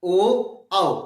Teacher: जीभ के पिछले हिस्से पर हल्की वाइब्रेट, आवाज सीधे बाहर, कोई जीभ में कोई मूवमेंट नहीं, केवल पिछले हिस्से से आवाज बाहर। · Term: पश्च स्वर